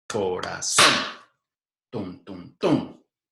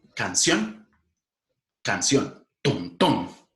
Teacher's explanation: El último golpe fuerte ocurre en la última sílaba. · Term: palabras agudas